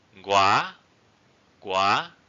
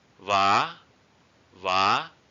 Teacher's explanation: a high raising tone it's like you raise it very high